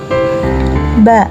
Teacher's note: suara huruf ini juga keluar dari antara kedua bibir bibir atas dan bawah bibir menutup saat mengucapkannya